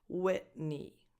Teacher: And the last vowel is a tense E, as in the word eat.